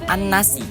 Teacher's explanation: Yang pertama ada an-nasi, yang dimana an-nasi itu merupakan alif lam bertemu dengan huruf nun, dan cara bacanya lam tidak dibaca langsung ke nun tasydidnya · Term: idgham syamsiah